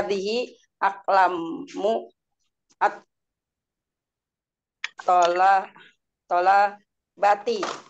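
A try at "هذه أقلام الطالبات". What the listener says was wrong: lamnya nggak panjang. Ya, jadi kalau begitu biar nggak kecetot apa namanya lidahnya, diistirahatkan di at, eh, aklamut, aklamut, aklamut, aklamut, aklamut bisa di situ istilahnya. aklamut tolabati. Coba dari awal disambung ya.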